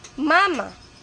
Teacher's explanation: Ibig sabihin, ginagamitan ng ilong kapag binibigkas. Kaya habang nagsasalita ka, may hangin na lumalabas sa ilong. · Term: pailong